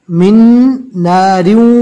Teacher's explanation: من نار میں جزم والی جو نون ہے اس کو نہیں پڑھا جائے گا، میم کو ڈائریکٹ اس نون سے ملانا ہے